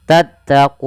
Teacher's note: Kita boleh memanjangkan untuk mad arid sukun 2 harokat, boleh 4 harokat, atau boleh pula 6 harokat. Nah, maka bisa kita simpulkan mad arid sukun ini asalnya adalah mad tabi'i. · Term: mad arid li sukun